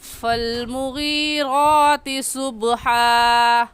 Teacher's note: موٹا کرنے کا طریقہ کہ آپ کے دونوں ہونٹ گول ہو جائے